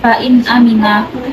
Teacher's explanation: dibaca izhar halki karena nun sukun bertemu dengan hamzah. Cara membaca jelas.